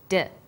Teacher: When you articulate d, you can feel your tongue against your tooth ridge